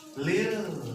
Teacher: kalau lafaz Allahnya sebelumnya itu harokat kasroh, maka cara membacanya harus tipis ke lafaz lah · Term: tarkik